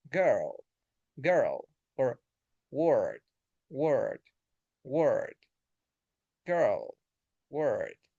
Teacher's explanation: lips neutral, tongue central.